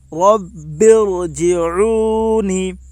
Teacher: را کے اوپر زبر ہے اس لیے را پر ہوگی، با کے اوپر تشدید ہے، تشدید والے حرف کو 2 مرتبہ پڑھتے ہیں، ایک بار پہلے والے حرف سے ملا کر اور ایک بار خود اسے۔ تشدید کی آواز میں ایک قسم کی سختی ہوتی ہے۔